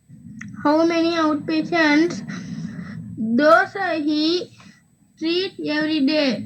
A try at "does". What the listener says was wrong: Does. It is not dosa. Does.